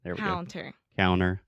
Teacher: a lot of times I don't articulate that t